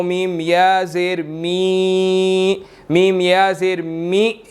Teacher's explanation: وقف آ چکا ہے، تو ہم یہاں پر نون کے اوپر جو حرکت ہے اس کو حذف کر کے پڑھیں گے